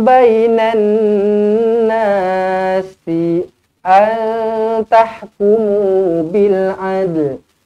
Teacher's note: Nun kosong bertemu dengan ta ikhfa hakiki dengan dua harokat.